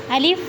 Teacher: الف منہ کے خالی حصے سے ادا ہوتا ہے